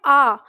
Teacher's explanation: जब हम बोलते हैं आ तो हमारा पूरा मुख खुलता है आ में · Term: विवृत